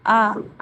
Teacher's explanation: ये मध्य स्वर का उदाहरण क्योंकि हम अ आ बोलते हैं तो ना तो पीछे से होता है आवाज और ना ही आगे से